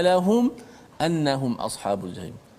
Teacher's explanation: Kita kena jelaskan mati mim tu tanpa boleh kita memanjangkan gunnah kat situ. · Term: izhar syafawi